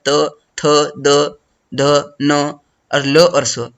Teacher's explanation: त थ द ध न और ल और स इसका उच्चारण जो है दंत से होगा